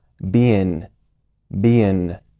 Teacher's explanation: la palabra Being se está pronunciando al final solo con un sonido de n es decir el sonido de la G se está está omitiendo es bastante común que los nativos cambien ese sonido de ng